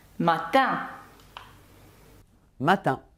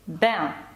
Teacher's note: носовий звук, який вимовляється ніби в посмішці. Щось на кшталт «ен». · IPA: [ɛ̃]